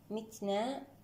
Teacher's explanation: التاء مع حرف النون هنا تقارب صغير حكمه الإظهار